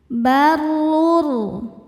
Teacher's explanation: Hual baru dbaca secara tafkhim karena barisnya dhammah. Cara bacanya ditebalkan.